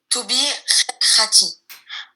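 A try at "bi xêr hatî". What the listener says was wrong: Tu te trompes avec le bi. C'est pas bi, c'est b.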